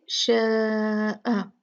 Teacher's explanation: یہ مد بھی 4 کاؤنٹ ہے، کیونکہ شاء مد تھی اس کے بعد حمزہ آ گیا تو یہی مد 2 سے 4 کاؤنٹ بن گئی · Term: مد متصل واجب